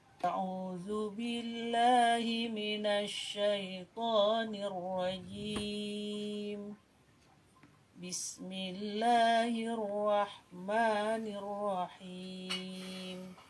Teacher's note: Hanya 2 nada ya, datar dengan turun. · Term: jiharka asli